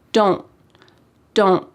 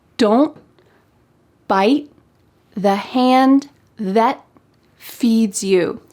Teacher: My tongue is at the top of my mouth trying to make that T shape, but there's no puff of air that comes out. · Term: stopped T